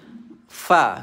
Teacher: Fa ni iaitu gigi atas dia bertemu dengan bibir bawah. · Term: huruf fa